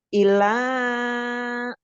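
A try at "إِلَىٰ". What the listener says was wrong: Ih, jangan panjang-panjang ilahnya. Ilahnya apa?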